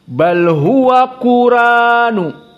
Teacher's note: Maka di sini Quran hamzahnya dihilangkan. Maka dibaca dengan alif saja.